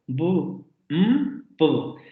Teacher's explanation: cuando los dos labios entran en contacto, como en el caso de la B, de la M y de la P. Y ahí lo notamos, los dos labios están en contacto. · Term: bilabiales